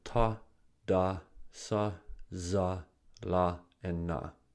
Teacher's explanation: produced by the tip of the tongue approaching or touching the alveolar Ridge which is located immediately behind the upper teeth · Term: alveolar consonants